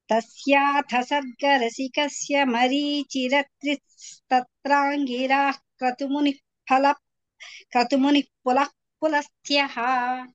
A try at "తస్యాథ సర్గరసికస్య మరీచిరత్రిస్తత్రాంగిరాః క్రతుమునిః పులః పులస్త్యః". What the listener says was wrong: మీరు అదే వేగంలో పెడుతున్నారు, వేగం తగ్గించలేదు. నాకు వేగం చాలా తగ్గించాలి.